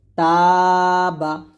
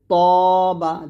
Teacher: এখানে তাটা পাতলা হবে, ত মোটা হবে